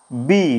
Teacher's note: বি যখন বলছি আমাদের কিন্তু ঠোটটা ঘর্ষণ হচ্ছে। একটা ঠোটের সঙ্গে আরেকটা ঠোটের ঘর্ষণ হচ্ছে।